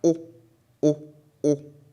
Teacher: when you produce it, it's perceived as though it comes through your nose, right? Your nose has an effect on the sound. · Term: nasal